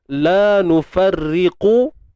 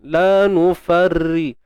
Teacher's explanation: Berhenti ke tebal ke? Berhenti ke sambung ke, tetap ra ni dibaca nipis.